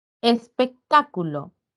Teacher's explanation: espectáculo recae en la sílaba ta · Recae en la sílaba ta, está además tildado y rápidamente he ubicado a la sílaba que tiene la mayor intensidad. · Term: sílaba tónica